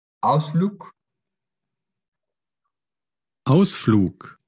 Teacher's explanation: la G al final se pronuncia como K